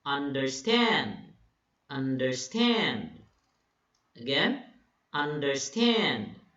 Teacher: 2 unstressed syllables, followed by 1 stressed syllable · The 2 first syllables are unstressed, while the last syllable is being emphasized. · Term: Anapest, anapest